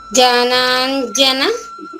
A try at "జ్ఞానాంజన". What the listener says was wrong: జా కాదమ్మా జ్ఞానం అంటాం కదా తల్లి.